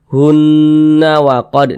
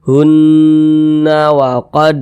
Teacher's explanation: cara bacanya digunnahkan atau didengungkan. Jadi suaranya itu kita tahan, kita panjangkan sejenak. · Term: gunnah musyaddadah